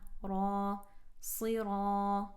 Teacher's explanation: sad with a kasra going into a heavy ra with a fatha, long sound of fatha.